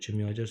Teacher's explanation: Kimyager sözündə uzun sait həqiqətən də ikinci hecadadır